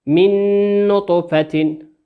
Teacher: نون ساكنة أتى بعدها حرف النون والنون من حروف الإدغام